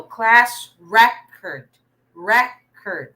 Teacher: the stress is in the first syllable because it's a noun